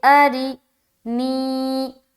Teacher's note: ری را کے نیچے زیر کی حرکت ہے، زیر کو جلدی پڑھیں تھوڑا بھی نہ کھینچے، معروف پڑھیں مجہول آواز سے بچے